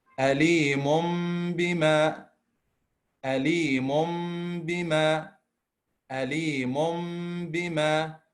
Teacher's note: So we replace the tanween or the noon with a meme, and we pronounce the meme only, but with a ghunna.